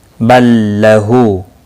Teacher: لام کے بعد دوسرا لام آیا ہے، اس لیے لام مشدد پڑھا جائے گا، پچھلا لام حذف ہو جائے گا۔